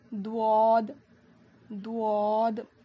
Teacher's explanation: زبان کی کروٹ کو اوپر کے داڑوں میں لگانے سے, لیفٹ یا رائٹ سائڈ کے داڑوں میں لگانے سے دواد ادا ہوتا ہے. اس کو ہم 5 الف کے برابر کھینچ کر پڑھیں گے.